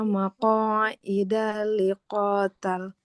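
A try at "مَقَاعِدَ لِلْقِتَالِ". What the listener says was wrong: Bukan liqotal. Yang panjang bukan qafnya tapi tak. Untuk bacaannya di sini koreksinya yang pertama itu panjang pendeknya Ibu Nah, terutama di akhir-akhir kata ya huruf-huruf terakhirnya. Nah, itu biasanya suka jadi panjang ya.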